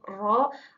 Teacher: konsonan getar, yaitu lidah bergetar ketika menyentuh langit-langit